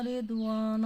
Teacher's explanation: را یہاں پہ باریک پڑھیں گے کیونکہ را کے نیچے کسرہ ہے